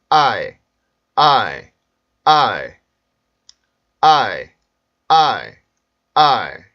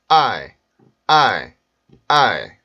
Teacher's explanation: 아에서 힘을 주고 이에서는 힘을 풀어주세요. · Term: 이중모음